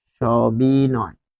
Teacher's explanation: দন্ত স এর উচ্চারণ হয় তালব্য স এর মতো, তাই এখানে স হয়েছে।